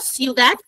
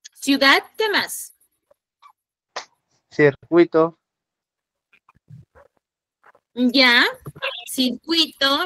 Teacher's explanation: Como es homogéneo y es diptongo, se mantienen unidos. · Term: diptongo homogéneo